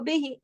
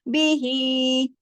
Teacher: पूरा बा को नहीं खींचा, ही को उसके मुताबिक हक अदा किया। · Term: खड़ी जेर